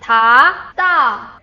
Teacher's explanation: Tongue position is almost the same, but da feels shorter and tighter.